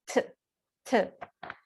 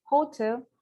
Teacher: T is voiceless. The manner of articulation, stop. And the place of articulation, alveolar.